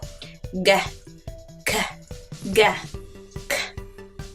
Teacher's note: 자, 이 소리들의 특징은요, 혀의 뒤쪽이 입천장에 닿으면서 목구멍을 딱 막으면서 나는 소리라는 거예요.